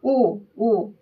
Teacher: यानी गोल होठ से बोल रहे हैं। ओ ओ थोड़ा सा समय लग रहा है।